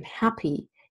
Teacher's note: When you compare the word, the sound in pink and sit and pit with the E sound that occurs in happy, you will notice that because the E is in an open syllable in happy and at the end of a word, it is a little bit longer. And in order to suggest the difference on paper or on screen, the IPA uses this symbol then as this short vowel in an open syllable and or at the end of a word.